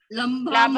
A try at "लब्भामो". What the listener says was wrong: देखिए ल में कोई मात्रा नहीं है ना